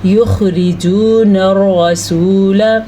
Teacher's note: حلق کے شروع والے حصے سے نکلتا ہے خا